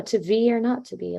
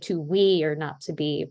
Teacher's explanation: sometimes BH is pronounced with a W instead of a V